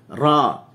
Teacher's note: Huruf ra ni dia guna permukaan lidah. Diletakkan di langit kita.